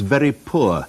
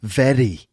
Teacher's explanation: That sort of little kind of tongue flap, that slightly rhotic R of very poor